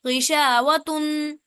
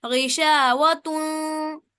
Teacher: اس تن کے اندر جو نون کی ساؤنڈ ہے اسے چھپانا ہے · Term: اخفا